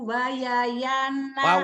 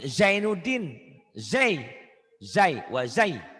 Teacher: Orang Jawa itu Z-nya ke Y melulu. Wazai itu Y.